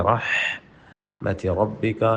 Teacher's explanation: رحمتی میں ہا پڑھتے ہوئے حلق پہ زور دیں